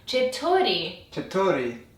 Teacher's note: you should be emphasizing the second syllable, so the t. Chetori.